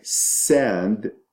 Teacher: So in words like sand, the s is a continuous sound.